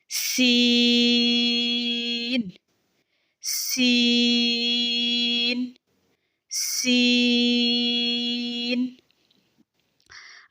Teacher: जबान की नोक सामने वाले नीचे के दो दांतों के किनारों से मजबूती से लगेगी और बारीक भी पढ़ना है सीटी की आवाज में भी पढ़ना है और नाक में आवाज नहीं जानी चाहिए तीन हर्फी है तो · سین کی ادائیگی میں زبان کی نوک سامنے والے نیچے کے دو دانتوں کے کناروں سے مضبوطی سے لگے گی اور باریک بھی پڑھنا ہے، سیٹی کی آواز میں بھی پڑھنا ہے، اور ناک میں آواز نہیں جانی چاہیے۔ تین حرفی ہے تو اس کو بند مٹھی کی 5 انگلیاں کھولنے کے بقدر لمبا کیا جائے گا، جیسے سین سین سین۔